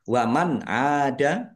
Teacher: Ain fathah alif mad thobi'i panjang dua harakat.